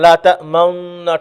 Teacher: ঠোঁট গোল হবে, দম্মার দিকে যাবে, কিন্তু কি হবে না? আওয়াজ হবে না, দম্মার আওয়াজ হবে না। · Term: ইসমাম